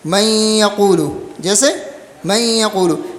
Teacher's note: یہ نون یا کے اندر مکمل مدغم نہیں ہوا ہے. نون یا کے اندر مکمل مدغم، یعنی نون کے اندر جو غننے والی صفت ہے وہ باقی ہے، غننے والی صفت ہے وہ کیا ہے؟ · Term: ادغام ناقص